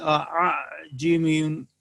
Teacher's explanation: یعنی حمزہ اور الف کی درمیانی کیفیت ہوگی، نہ خالص الف اور نہ خالص حمزہ پڑھا جائے گا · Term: تسہیل